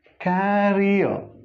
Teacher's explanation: This final R is silent. This word, career, so only the length is different.